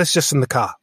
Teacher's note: he wasn't rounding off the r in the word car as you'd expect as an american person